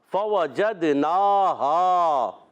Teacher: فوجدناہا، اچھا یہاں جو حمزہ ہے نا اس کو واضح کرنا ضروری ہوتا ہے، خوب واضح کر کے پڑھیں گے۔ فوجدناہا، فا پر زبر، واو پر زبر، جیم پر زبر، جیم کو دال سے ملا دیں گے، دال میں قلقلہ ہوگا